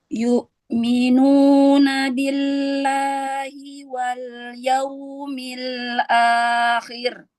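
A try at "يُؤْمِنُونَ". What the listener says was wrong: Yu'minu. Jangan terlalu lama menahan syiddah pada hamzah.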